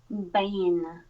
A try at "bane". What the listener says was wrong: The first one sounded like it had more N than diphthong. And I want the vowel to be a little longer than the N. Bane. kind of just ending it. So let that diphthong really happen. A.